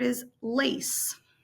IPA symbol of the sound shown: s